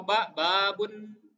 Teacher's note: untuk ba dan mim keluar dari pertemuan kedua bibir